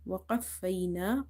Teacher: So here fa is twice. We have to stress on it in order to pronounce it twice.